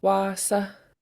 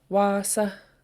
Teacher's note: You can tell by this accent mark. So we have a long vowel here and then a short one. They're both high tone.